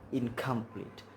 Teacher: The velar N is followed by the velar K